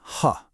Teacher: To make this sound, imagine you're trying to fog up a pair of glasses, but the breath is coming from deep down in your throat. It's like a heavy, breathy sigh. Now you try.